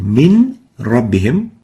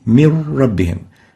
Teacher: So instead of saying min rabbihim, where each of the two letters, the noon and ra, are spelled clearly and independently, the noon would be totally merged into the ra, and that will make the noon disappear. So instead of saying min rabbihim, we'll say mir rabbihim. · So instead of saying min rabbihim, we'll say mir rabbihim. No noon would be pronounced, only a ra, and the ra will be like duplicate ra. It has shadda. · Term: idgham, idgham without Ghunnah